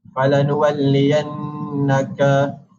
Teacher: Dan seterusnya yang dibulatkan adalah menunjukkan kepada wajib al-gunnah, iaitu dengan membaca dengung 2 harakat